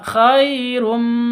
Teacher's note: Khai sifat lin, lentur, lemas, tidak boleh disentak.